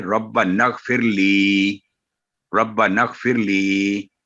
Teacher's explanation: کیونکہ غائن پر جزم ہے اس لیے الف، دونوں الف سائلنٹ ہو جائیں گے